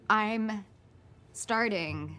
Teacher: Notice that the second T sounds like that flap T